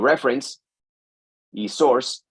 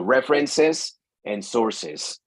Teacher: La única manera de diferenciar el singular aquí del plural, cuando los sustantivos ya terminan en un sonido que es parecido a la S, entonces es agregarle esa ES o esa extra sílaba en la pronunciación